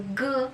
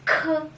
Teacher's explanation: So G, there is no air coming out from your mouth. So G. Then the letter K, it's K. There's an air. G, K. You can feel that.